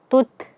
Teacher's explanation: ta ini dia mempunyai sifat syiddah, tertahannya suara dan dia juga mempunyai sifat hames, ya mengalirnya nafas atau udara. Sehingga cara membacanya adalah kita syiddahkan terlebih dahulu.